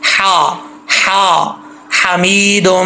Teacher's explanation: है जिसके ऊपर मैंने एरो रखा हुआ है, ठीक है। तो इस हा का ताल्लुक हल्क से है, सीने से नहीं है, अगर सीने से होता तो ये भारी पड़ी जाती , ये हल्क से इसका ताल्लुक है इसलिए ये बारीक पड़ी